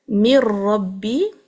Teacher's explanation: noon is fully dropped into the ra. It's a kamil idgham because the second look is carrying a shadda as well.